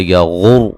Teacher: غین کو موٹا ادا کریں گے اور را کو موٹا ادا کریں گے